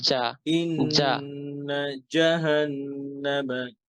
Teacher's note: জিব্বার জি আগায় না, জিব্বার মাঝখানে জিব।